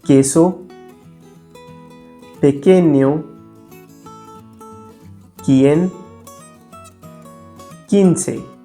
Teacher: In Spanish, when we write QUE or QUI, the U is completely silent. Therefore, QUE is pronounced K and QUI is pronounced ki.